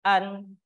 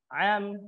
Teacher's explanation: Hamzah itu berada di tenggorokan bagian bawah sedangkan huruf Ain itu berada di tenggorokan bagian tengah